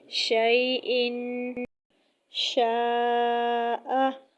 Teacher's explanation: آگے شین۔ شین بھی جب وسط زبان جب بالمقابل اوپر کے تالو سے لگے تو اس سے شین ادا ہوتا ہے